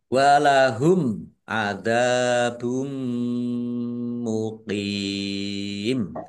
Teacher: Mim sukun bertemu dengan huruf ain. Bacaan izhar syafawi dibaca jelas. · Mim tasdid dibaca ghunah ditahan kira-kira dua harakat biar tampak dengungannya · karena bertemu dengan huruf terakhir yang dibaca sukun karena wakof, maka menjadi mat arid lis sukun. Dibaca panjang boleh 6, 4, atau 2 harokat. · Domah tanwin bertemu dengan huruf mim. Bacaan idgham bighunah. Masuk dengan mendengung. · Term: idgham bi gunnah, izhar safawi